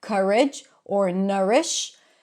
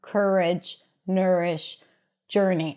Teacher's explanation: in other dialects, you might hear it pronounced with a cup sound